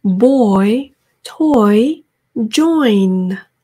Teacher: 초반에 너무 많이 벌리지 마시고요. 오므린 상태에서 오 정도 한 상태에서 이까지 마무리 지으시면 되겠습니다. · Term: oyster sound